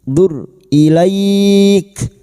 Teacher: Huruf ra sukun yang didahului dumah. Kita baca tafkim